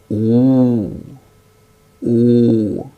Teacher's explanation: when we utter oo, oo, that is the back portion of the tongue goes up.